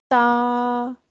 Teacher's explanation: जुबान की नोक ऊपर के दांतों की जड़ से लगेगी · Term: ता का मखर